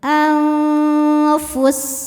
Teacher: Cara bacanya nun disamarkan ke fa disertai dengung. Dengung dan samarnya sama besar karena makhraj fa tidak dekat dan tidak jauh dari nun. Anfus ini pendek ya walaupun berhenti. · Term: ikhfa hakiki ausat, ikhfa hakiki awsat